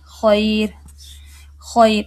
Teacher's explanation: را ساکن ہے اس سے پہلے یا ساکن ہے تو پھر چاہے اس سے پہلے زبر ہے تب بھی باریک ہوگی